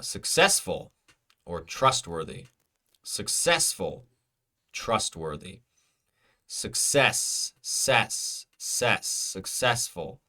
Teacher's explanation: Second syllable is stressed, so it is successful.